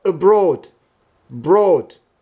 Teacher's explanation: the second syllable contains the long vowel o